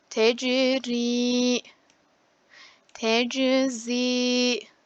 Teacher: buradaki ziyi bir elif miktarı uzatıyorum